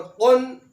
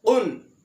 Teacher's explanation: قاف زبان کی جڑ اور اوپر کے تالو کے ساتھ ادا ہوتا ہے